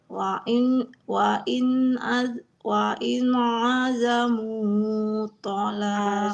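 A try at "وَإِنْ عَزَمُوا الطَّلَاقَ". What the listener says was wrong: Azamut mimnya nggak boleh panjang karena di depannya ada alif lam syamsiah ya. Wa in azamut to, langsung masuk ke huruf to-nya.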